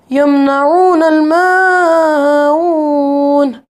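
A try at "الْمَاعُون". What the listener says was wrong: माऊन एक अलिफ के बराबर लंबा करेंगे।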